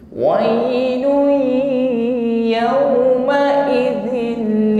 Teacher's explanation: Wai ya, bukan wai, tidak ada tekanan. Dhammah tanwin bertemu ya idgham bi guna. Lun masuk pada huruf ya, jangan lupa dengungkan ya.